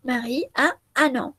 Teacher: esa última N se une con el, con la vocal A de la palabra siguiente. Ustedes saben que la última N en francés no se pronuncia en una palabra, pero cuando tenemos una vocal después, sí se pronuncia.